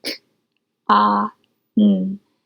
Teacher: Con has 3 sounds, k, ah, n, but none of those are or, like corn, so it will not have the vowel R pattern.